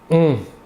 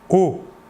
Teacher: pour le O, qui n'est pas nasal, vous ne sentirez pas d'air passer sur votre doigt. O. L'air sortira entièrement par la bouche.